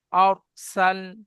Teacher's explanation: দেখেন, হামজার উপরে জাবার, জাবারটি হারাকাত, হারাকাতে পড়া তাড়াতাড়ি পড়তে হবে, টান দেওয়া নিষেধ। র সাকিনে ডান দিকে জাবার এসছে, রকে পুর করে পড়তে হবে, হ্যাঁ। সিনের উপরে জাবার, জাবারটি হারাকাত, হারাকাতে পড়া তাড়াতাড়ি পড়তে হবে, টান দেওয়া নিষেধ।